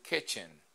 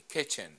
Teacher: cuando decimos kitchen, el acento está en la primera sílaba. Entonces aquí en esta palabra, la vocal I está en una sílaba acentuada.